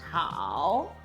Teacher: third tone starts relatively low at number 2, dips down to 1, and then finally rise up to 3 or 4. So that's why tone 3 is often represented as 2, 1, 4. · When used in isolation in characters such as How? tone 3 is pronounced fully as a dip and a rising tone. Here we have a spectrum of how, and the pink line shows the pitch contour.